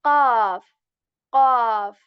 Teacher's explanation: we are going to make it heavy than K sound. Okay, qaf. But we are not going to make our lips round. So many people make this mistake that whenever they try to make the qaf heavy, they make their lips round.